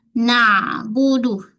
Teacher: jangan naik ke hidung, ain tengah kerongkong